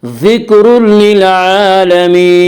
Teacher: ذکر للعالمین، عین کے اوپر کھڑا زبر ہے، کھڑا زبر کو ایک الف کے برابر کھینچ کر پڑھیں گے